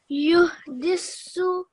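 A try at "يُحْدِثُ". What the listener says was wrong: So you said it like a seen sound, okay? But we're trying to just sa. So say yuhdisu. You don't say su. If you say su, yuhdisu, if you say su, then it sounds like a scene. This is scene. So say it soft way. So the tongue goes in between your upper and lower teeth, and you say the sound. Yuhdisu.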